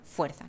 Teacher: el sonido pasa a ser una interdental fricativa sorda